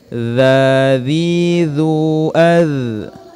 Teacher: itu tidak dipantul karena huruf dha ini bukan merupakan huruf qalqalah.